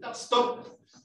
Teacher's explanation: La P es con los dos labios juntos.